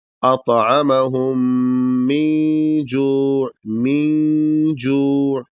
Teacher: تو یہاں پر نون پر بھی غنہ ہوگا اور اس کے غنہ کا طریقہ یہ ہوگا کہ اس میں نون کو آدھا ادا کر کے ناک میں آواز لے جائیں گے، پورا نہیں ادا کریں گے ورنہ غنہ صحیح نہیں ہو پائے گا.